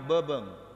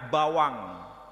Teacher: B dan W itu disebut sebagai huruf bilabial, huruf bibir. Jadi saling ada kemiripan.